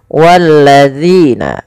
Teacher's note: Yaitu ujung lidah kita menempel dengan gigi dari atas kita. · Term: huruf dzal